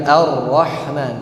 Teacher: ketika kita mengucapkan huruf ro yang tasdid jangan di terlalu digetarkan menjadi arrahman tapi disembunyikan arrahman seperti itu. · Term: takrir